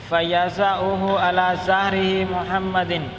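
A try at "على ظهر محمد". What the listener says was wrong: علی ظہرہ کوئی نہیں،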